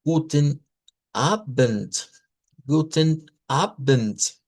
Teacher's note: palabras que resulta ser que se escriben con D y se pronuncian con T